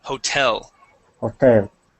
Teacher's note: The accent goes at the end.